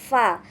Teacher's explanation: Makhraj fa ini dihasilkan apabila bibir bawah kita ini bertemu dengan gigi seri atas